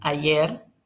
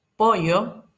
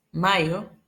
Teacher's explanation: Algunos alófonos que tiene la palatal sería la fricativa palatal tensa, que es la variante más extendida por el continente. Sí, es la que generalmente se utiliza en ayer en lugar de ayer, pollo por pollo, mayo por mayo, y se da en regiones no cubiertas por los otros alófonos.